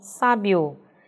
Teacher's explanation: Quando eu pronuncio então esse bio, eu percebo que o I ele sai com menos entonação que esse O, sinalizando para a gente então que o I é semivogal e o O é vogal. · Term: ditongo crescente